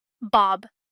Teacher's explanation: The English B is also pronounced in a similar way when it comes at the end of a syllable. However, unlike in Korean, the lips in English may open slightly afterward, allowing a small release of air, so the sound becomes audible at the end. This makes a subtle difference from the Korean final B sound, which ends completely with closed lips and no release of air.